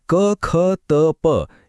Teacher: कठोर वर्णांचा उच्चार करताना आपल्याला अधिक श्वास आणि जोर लावावा लागतो. तिथे कोणताही नाद नसतो म्हणूनच त्यांना अघोष वर्ण म्हणतात.